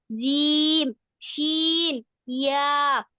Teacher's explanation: 6 নম্বর মাখরাজ জিহ্বার মধ্যখান হইতে তার বরাবর উপরে তালুর সাথে লাগিয়া